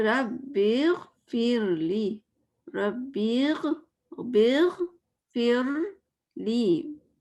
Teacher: اب یہاں پہ رو لائٹ ہوگا اس لیے کہ اس کے پیچھے زیر آ رہا ہے